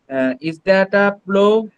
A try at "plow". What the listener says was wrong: এটার উচ্চারণ হবে প্লাউ। এটার উচ্চারণ হবে কি? প্লাউ, প্লো না, প্লাউ, প্লাউ, প্লাউ, ঠিক আছে?